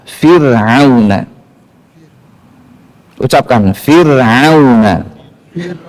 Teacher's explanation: meletakkan posisi lidah ke bawah itu bacaan menipiskan ro caranya dengan memposisikan lidah ke bawah